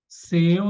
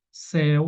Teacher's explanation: Seu não recebe porque é fechado. Céu recebe porque é aberto.